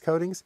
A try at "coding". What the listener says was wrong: Coding. CODING, not coating. This is accent.